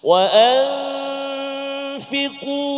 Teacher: Ikhfa hakiki, iaitulah nun mati ataupun tanwin bertemu dengan huruf-huruf ikhfa, dan cara membacanya ialah menyembunyikan suara nun sakinah beserta dengan dengung